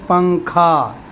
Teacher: نون کی آواز کو ناک میں چھپا کر پڑھنا چاہیے، نوک زبان تالو سے ہٹا کر · تو یہ نون جو ہے، پنکھا کا نون جو ہے وہ ناک میں چھپ جا رہا ہے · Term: اخفا